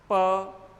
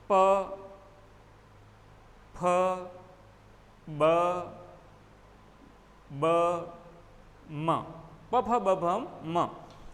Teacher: दोनों होंठ बंद हो जाएंगे और जैसे ही खुलेंगे ये ध्वनि जो आपके पीछे लिखी हुई है ओष्ठ व्यंजनों की, ये उच्चरित होगी